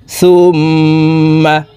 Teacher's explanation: মিমের সাথে নাকের বাঁশি থেকে তিন সেকেন্ড পরিমাণ গুন্না করে ধরে রাখবো